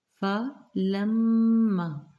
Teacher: فلما میم میں شدت پہ غنہ کریں گے